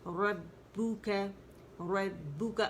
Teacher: با جو ہے مشدد ہے اور اس میں سپلٹس آف سیکنڈز کا پوز آئے گا، کیونکہ ایک تو یہ مشدد ہے، جماؤ دیں گے، پھر اس کے اندر شدہ ہے تو پوز آ جاتا ہے شدہ پہ.